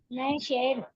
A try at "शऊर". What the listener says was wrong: शहर नहीं है वो, आइन है और वाव है। शऊर, अक्ल वो शौर नहीं बोलते हैं, आपकी विजडम, आपकी शऊर, अक्ल, हाँ अक्ल वो शौर से।